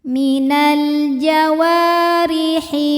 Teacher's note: ra berbaris di bawah yaitu baris kasroh, maka dibacanya tipis ri tanpa harus mengangkat pangkal lidah · Sebab ada ya sukun yang sebelumnya berbaris kasrah. Maka dibacanya panjang dua harakat. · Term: tarqiq, mad thabi'i dzahiri